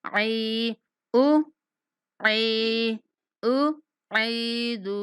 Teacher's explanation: آئین کا جو مخرج ہے وہ درمیان حلق ہے تو وہاں درمیان سے نکالنے کی کوشش کیجیے گا، عی او